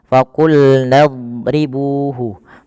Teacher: huruf dot itu kan makhrajnya sisi lidah kita bertemu dengan gigi geraham atas.